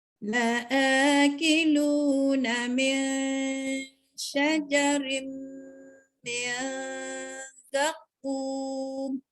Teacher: Nun mati bertemu dengan shin. Kena baca ikhfa. · Nun mati bertemu dengan shin, bacaannya hendak diikhfakan, dan tanwin bertemu dengan mim, maka dia idgham ma'al gunnah, dan nun mati bertemu dengan zai diikhfakan. Jadi semua tu kena dengung. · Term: dengung ikhfa